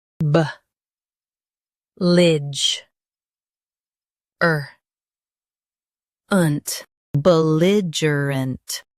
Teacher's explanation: Stress li and soften uh and unt.